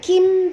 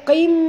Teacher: bukan kim tapi qim, tebal huruf qaf ya